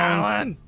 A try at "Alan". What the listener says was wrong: Alan. No, it's Alan. It's one syllable. It's one syllable.